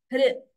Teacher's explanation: So this R should be pronounced as the swara itself, not like Ri or Ru. It is not Hrudi.